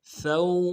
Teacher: واو کو یعنی سا کو واو نرمی سے ادا کریں گے، واو لین ہے بغیر کھینچے پڑیں گے ، ثو ولا تعثوا فی الارض، فا کو لام کے ساتھ